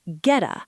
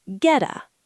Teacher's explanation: I didn't say the T and I didn't say a D. I just stopped breathing for a microsecond. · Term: glottal stop